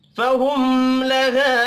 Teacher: فہم میم ساکن کے بعد لام ہے، اظہار شفی ہوگا، یہاں پر بھی غنہ نہیں ہوگا